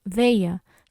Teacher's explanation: quando a gente vai pronunciar, o A sai apenas pela boca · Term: ditongo oral